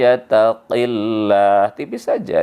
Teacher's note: Karena sebelum Allah berbaris kasrah ya. Jadi kalau kasrah sebelum Allah, maka Allah dibaca tipis.